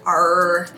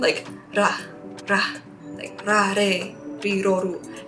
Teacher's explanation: It's not like a hard, deep R, like R. It's more like a very light, almost like a D, like ra, like ra, re, ri, ro, ru.